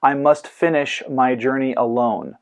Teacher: the syllables Fin jur and lone are stressed while the two syllables coming before each of them are short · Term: anapestic